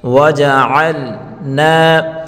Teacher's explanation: الف مدہ ہے، ایک الف کی مقدار کھینچ کر پڑھیں گے